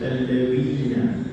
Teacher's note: hujung lidah letakkan pada bawah dua gigi atas